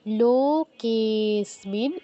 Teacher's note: লোতে যতটা টাইম দিব কে তে তার থেকে বেশি টাইম দিতে হবে কারণ এখানে প্লুত উচ্চারণ আছে